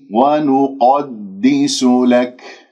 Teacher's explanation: بعدين راح تجيني القاف المفخم مرتبة ثانية لأنها مفتوحة، ونقدس لك، لاحظتم الآن لك هكذا لما أقف بالكاف راح تكون ساكنة ويكون بالهمس، لأنه الكاف شديدة مهموسة.